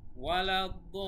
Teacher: তারপর আবার লিন, শেষে এখানে এসে আবার মাদ্দে আরজি প্রয়োগ হয়েছে, মাদ্দে তবাই কিন্তু না, মাদ্দে আরজি, কারণ আমরা থেমেছি। জেরের বাম পাশে যজমালা ইয়া এসেছে, আবার থেমেছিও, সেই জন্য 1 আলিফ টান না হয়ে 3 আলিফ টান হবে শেষে